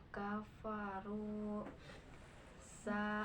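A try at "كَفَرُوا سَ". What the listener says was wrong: sin bukan sa. Di ikro sa, di sini sin ya.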